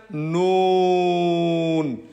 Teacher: জিহ্বার আগা তার বরাবর উপরে তালুর সঙ্গে লাগাইয়া